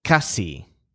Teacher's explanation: so the stress is on cas, like cost.